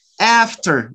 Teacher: the first vowel, you use the front part of your tongue, after.